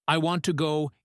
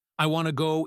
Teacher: I want to go is staccato. It is choppy. I want to go is smooth. It flows.